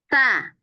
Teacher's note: Antara gigi atas dan bawah, ujung lidah keluar sedikit aja. Ta. Ta, Tarik ke dalam.